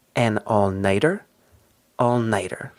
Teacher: In this expression, we don't really get a T sound. When we just say the noun night by itself, we get a strong T, very crisp T sound. But here, when we add the ER, we get more of a D sound.